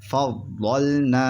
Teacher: یہاں پر نون کھنچے گا کیونکہ نون کے بعد حرف مدہ الف ہے اور حرف مدہ 3 الف با یا جہاں بھی ہوچتے ہیں کھنچتے ہیں.